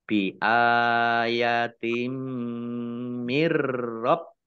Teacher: Nun sukun bertemu dengan huruf ro, bacaan idgham bila gunnah. Idgham masuk, bi dengan la tidak gunnah mendengung. Masuk dengan tidak mendengung. Mirrabbikum, baknya ada tasdidnya dibaca double.